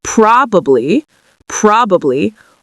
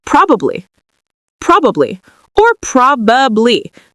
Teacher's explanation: There's actually 2 different pronunciations of this. You can say probably with 3 syllables, probably, probably, or you can say it in conversation with 2 syllables